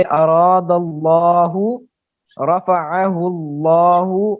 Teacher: اللہ کا جو لام ہے اس سے پہلے اگر زبر والا یا پیش والا حرف ہو تو اس لام کو پر کر کے پڑھیں گے، جیسے اراد اللہ، رفعہ اللہ، اور اس پر اس پر کرنے کو تفخیم کہتے ہیں، جی اس پر کرنے کو تفخیم کہتے ہیں۔